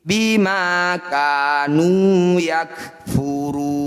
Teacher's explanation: Mad tabi'i atau mad asli jika bertemu dengan huruf hidup kemudian diberhentikan, ini jadi bacaan mad arid disukun. Ru kita panjangkan 6 harokat atau 6 ketukan, kemudian huruf terakhir disukun. Bima kanu yakfuruna, ketika berhenti bima kanu yakfurun.